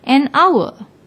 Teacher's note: when we pronounce the word the H is silent we pronounce it as if it begins with the second letter the vowel o